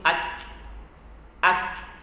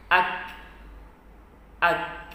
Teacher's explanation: Ada nafas yang keluar dari makhraj huruf kaf itu. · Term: sifat hamasnya